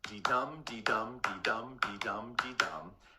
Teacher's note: an iamb, that foot, is an unstressed syllable followed by a stressed syllable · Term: iambic pentameter